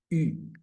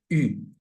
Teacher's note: se llamaría vocal cerrada frontal redondeada